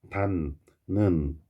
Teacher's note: 닫는 뒤에 비음이 왔어요. 니은이 왔죠? 그러니까 앞에 디귿이 비음이 돼버립니다. 닫는 이런 식으로 한 놈이 한 놈으로 바뀌었어요. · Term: 비음화